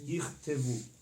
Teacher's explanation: when you have two shvas next to each other in the middle of the word, the first shva is short, silent, and the second one is a little bit longer